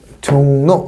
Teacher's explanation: 울림인 비음과 울림인 유음 사이에서 비음화에 해당되겠죠